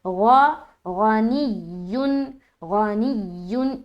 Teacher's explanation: آگے غنی، غین زبر غا، غا بھی موٹا پڑھیں گے کیونکہ حروف مستعلیہ میں سے ہے